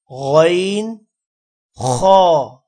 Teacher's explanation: غین اور خا جو تالو کے ساتھ والا حصہ ہے وہاں سے ادا ہوں گے